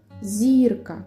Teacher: наголос падає на звук І а складів у слові два